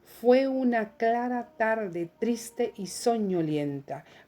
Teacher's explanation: Ahí se marcaron todos los acentos rítmicos. Se marcó en la sílaba 1, la 3, la 5, la 7, la 9 y la 11. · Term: acento rítmico